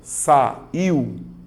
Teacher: Eu vou notar que a letra I tem um som mais forte. Então, a letra U, ela é mais fraca, ela é uma semivogal. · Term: ditongo, decrescente, oral